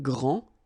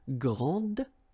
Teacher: Okay, so phonetically what you can hear is that this first form here for the masculine, grand, so you don't pronounce the final D, will be exactly the same as the plural form for the masculine, grand.